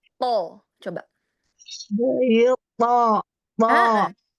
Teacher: diangkat pangkal lidah belakang, jadi isti'lanya disempurnakan supaya pangkal lidahnya hampir menyentuh langit-langit. Kemudian pada saat itbaqnya, dia kita bikin seperti ada cekungan pada ujung lidah, jadi seperti memangkok dia ya. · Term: Huruf to-nya